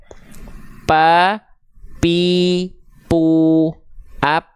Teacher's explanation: kalau yang disentukan adalah bibir atas dan bibir bawah dia tidak akan mengalirkan hembusan angin mampet anginnya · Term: huruf P